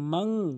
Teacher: যদি ইকফায় হাকিকির হরফ এসেছে তারপরে নুন সাকিনের পর সা এসেছে, এই জন্য নুন সাকিনকে গুন্না করতে হবে